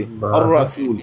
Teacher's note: रा को मुफखम पढ़ना है, आपको पता है। सीन को सीटी की आवाज़ से पढ़ना है